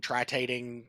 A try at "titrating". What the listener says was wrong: Titrating. Emphasis was on the wrong syllable.